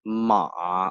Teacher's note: And the third is like ma, like ma. You go down and up. So ma is a horse.